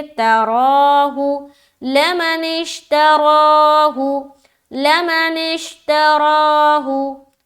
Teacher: तराहू, ता ज़बर ता, रा खड़ा ज़बर रा, तरा, रा को मोटा रख के खींचेंगे